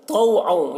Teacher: यहाँ पर तौ को पुर पढ़ेंगे, तौ हुर्फ़ मुस्तालिया में से है। और यहाँ पर तनवीन के बाद वाव है, हुरूफ़ यूमिन में से, तो तनवीन को वाव से मिलाकर गुन्ना के साथ पढ़ेंगे, इसको इदगाम नाक़िस कहते हैं।